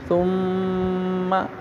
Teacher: اب میم مشدد ہے، یہاں پہ غنہ ہوگا